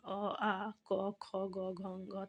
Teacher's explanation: इनका उच्चारण स्थान है कंठ नाम है ध्वनि का कंठ इन्हें हम कंठ वर्ण भी कहते हैं